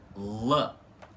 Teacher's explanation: o L sempre ter que ser pronunciado com a língua encostando no céu da boca em balborano